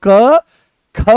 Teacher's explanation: तो जैसे ही ख बोलते हो तो पूरे कमर तक इसकी दम निकलता है, और यहां से इस वाले हिस्से से ये उठ करके चलता है। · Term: महाप्राण